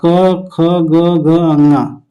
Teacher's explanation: क, ख, ग, ग, ङ कंठ से बोला जाता है।